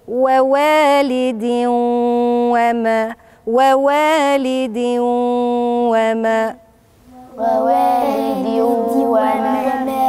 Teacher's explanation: وراها حرف من حروف الإدغام الواو، والتنوين نون ساكنة، بضغم الاتنين في بعض